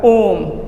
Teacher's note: कहलाता है और नंबर तीन में आता है आपका प्लुत स्वर जिसको बोलने के लिए तीन मात्रा का समय लगे वह प्लुत स्वर कहलाता है